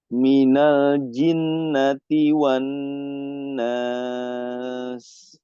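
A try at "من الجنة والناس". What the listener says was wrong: Nah, gunnahnya ditatuilkan lagi, dipanjangkan. Gunnah.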